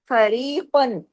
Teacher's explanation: فری باریک، قاف 2 زبر قن ہیوی، ہیوی بھی پڑھنا ہے اور اظہار ہلکی بھی کرنا ہے.